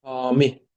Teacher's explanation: Deməli, hami sözündə hami A uzanır, vurğu i-nin üstünə düşür.